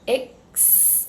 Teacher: To pronounce experience, you're going to start with this I as in você sound, go straight to the k sound